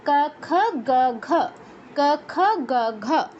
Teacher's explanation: তা এদের উচ্চারণ স্থান হচ্ছে কণ্ঠ। জিহ্বা কণ্ঠকে স্পর্শ করে ক বর্গের অক্ষরগুলো উচ্চারণ করতে হয়।